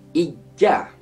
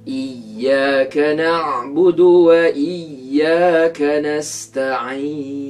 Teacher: Jika bunyi ya bertasydid itu terlalu kuat, terlalu berat dibunyikan, bunyinya akan bertukar menjadi bunyi macam huruf jim, iaitu ijja.